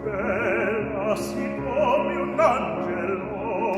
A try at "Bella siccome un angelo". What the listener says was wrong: Good, I still hear one accent. He wrote three accents. Angelo. It's not an accent on the wrong syllable, it's an intensifier of the emotion.